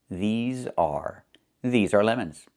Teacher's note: Make sure you make the long E sound like green beans. These. Plus the Z sound like in zebra and zipper. Z with a voice.